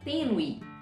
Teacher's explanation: Então, veja que quando você pronuncia esse o E tênue, né, ressalta o E e não o U. Ele é considerado uma semivogal.